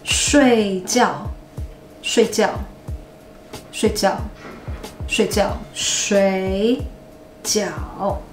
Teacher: To sleep.睡觉睡觉 So it's force tone combination. The tone has to drop till the end, till the bottom, okay?